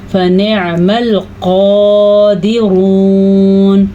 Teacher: فا کی مقدار کم ہوگی اور نون کو عین کے ساتھ جوڑ دیں گے